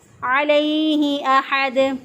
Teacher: عین کو وسط حلق سے ادا کیا